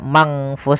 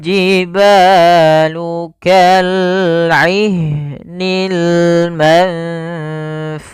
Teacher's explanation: Maka ikhfa-nya itu, ikhfa adalah membacanya ke huruf yang setelahnya atau disamarkan ke huruf fa-nya